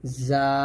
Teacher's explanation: যার মাখাজটা হলো জিহ্বার আগা সামনে নিচের দুই দাঁতের মাঝে লাগবে এবং যা টা পাতলা করে উচ্চারণ করবেন